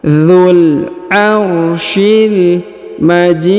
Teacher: huruf J dipanjangkan boleh dua boleh empat boleh enam harakat karena di depan huruf Ji terdapat ya sukun atau ya mati